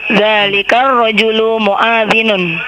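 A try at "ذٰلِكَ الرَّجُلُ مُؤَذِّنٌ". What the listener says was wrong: Naam, muadzinun. Tidak ada yang panjang di situ. Muadzinun.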